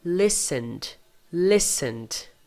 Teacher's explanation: tem vibração no N, então no passado, listened, som de D. O ED tem som de D.